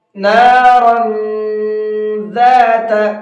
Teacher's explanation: ہے، ذال اخفا کے حرفوں میں سے ہے، تو اب یہاں تنوین کے اندر اخفا کریں گے، ناک میں آواز کو چھپا کر کے پڑھیں گے